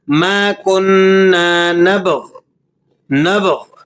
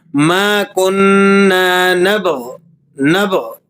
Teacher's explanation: غین کو آپ واضح کریں گے لیکن غین پر لگی ہوئی حرکت کو آپ نے واضح نہیں کرنا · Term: وقف